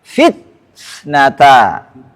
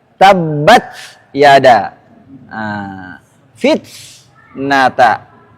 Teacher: Enggak boleh langsung ke fitnata. Ada syidah dulu sebentar kemudian ke hams.